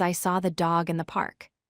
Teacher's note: When we speak naturally, we stress the important content words, dog and park. We do not stress the function words, the and in.